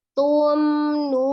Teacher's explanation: Beda dengan yang tumnun, itu mimnya hanya disempurnakan, bertemunya 2 bibir, tapi dia tidak ditahan. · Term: izhar safawi